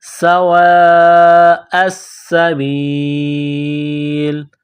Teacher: سین میں سیٹی کی آواز پیدا کرنی ہے